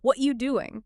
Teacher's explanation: if you look at the soundwave of a native speaker saying that casually, the word are is completely missing. It is not spoken at all.